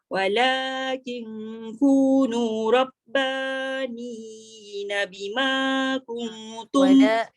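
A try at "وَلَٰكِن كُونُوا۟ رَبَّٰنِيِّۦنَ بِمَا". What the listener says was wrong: Walakin kunu rabbaniyina bima. Bukan tak tekan. Dah tekan tapi satu harakat. Dia kena dua harakat.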